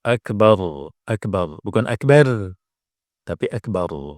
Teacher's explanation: ra-nya yang terakhir ini otomatis kita baca sukun, ya juga bacanya tebal karena sebelumnya ada fathah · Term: tafkhim